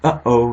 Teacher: Alright, so you say uh-oh, and where it's just a very sudden stop in your, I guess, your glottal region. That's just a glottal stop.